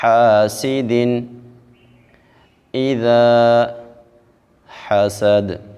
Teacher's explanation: ہا کو باریک پڑھیں گے اور واضح کریں گے